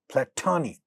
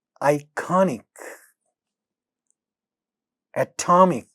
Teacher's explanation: Second syllable here are stressed and first sounds are aspirated in those. So platonic, this is aspirated.